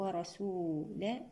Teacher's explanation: الراء هنا مفخمة لأنها مفتوحة